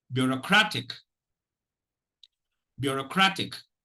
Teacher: there is a secondary stress, and it is on the first syllable